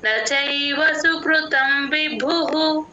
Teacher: అక్కడ భ కి మహాప్రాణం ఉంది చూడండి